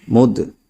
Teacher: لازم ہوگا۔ نون 2 پیش نن، جان، میم دال پیش مد، یہاں پر حروف قلقلہ میں سے دال ساکن ہے اس لیے قلقلہ خوب ظاہر ہوگا